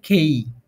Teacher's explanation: কে উচ্চারণ হবে খ এর মত এসপিরেটেড